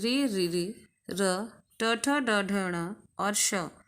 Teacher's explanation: री र ट ठ ड ढ ण और श ये मूर्धा से बोले जाते हैं